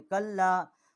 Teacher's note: چھوٹی مد ہے لام الف لا، 3 الف جتنا اس کی آواز بلند کی ہے